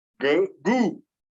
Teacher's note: it stays in the back because the oo is in the back